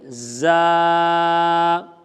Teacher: زا پر سختی کرنی ہے اور سیٹی کی آواز پیدا ہوگی